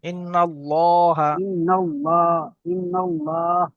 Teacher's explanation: ল উচ্চারণ করার সময় ঠোঁট দুটো গোল হয়ে যাবে